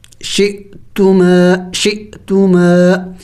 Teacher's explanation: حمزے کے اوپر جب سکون ہو تو اس کو جھٹکا دے کے پڑھا جاتا ہے